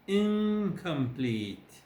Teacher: Now complete, the ek is velar, so the nasal becomes velar